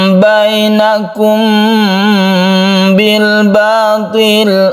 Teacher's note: yaitu ketika kita membaca mim mati kita bersiap membaca karena ini makhrojnya itu sama-sama di bibir maka ini tidak ketara samarnya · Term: Ikhfa Syafawi